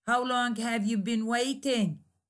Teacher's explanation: at the end of each word there is a falling intonation